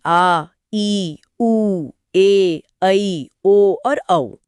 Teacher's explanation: अच्छा, और दीर्घ स्वर? दीर्घ स्वरों में ह्रस्व से 2 गुना यानी 2 मात्रा का समय लगता है